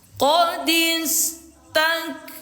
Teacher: Cara bacanya pertama dilebur, mim yang sukun ini dilebur ke mim yang berharokat. Lalu kedua disertai dengan dengung selama 2 harokat atau 2 ketukan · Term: idgham mimi